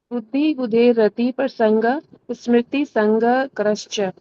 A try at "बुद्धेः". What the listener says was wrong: बुद्धि बुद्धेर आएगा जी, आपने बुद्धेर बोला है, दे नहीं बोलना, बुद्धेर। बुद्धेर रति रति प्रसंगः स्मृति